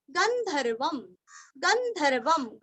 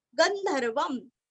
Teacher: ग के ऊपर आघात और अनुस्वार का उच्चारण आधा म